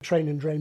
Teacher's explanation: A majority of people below 40 say that words like ‘train’ and ‘drain’ begin with /tʃ/ and /dʒ/.